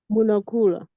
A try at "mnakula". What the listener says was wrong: mnakula. So the M will replace the U.